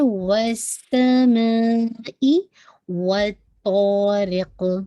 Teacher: وَالسَّمَاءِ وَالطَّارِقِ میں دیکھیے گا وَالسَّمَاء whistling sound آئے گی، واو کی فتح میں جیسے ڈبلو کا ساؤنڈ اور وی کا ساؤنڈ نہیں، ٹھیک ہے. وَالسَّمَاء مین اسٹریچ کیجیے گا 4 to 5 کاؤنٹ، ٹھیک ہے پورا، اور پھر حمزہ کی کسرہ کو واضح کیجیے گا ای، ٹھیک ہے، ناٹ دا ای، ٹھیک ہے.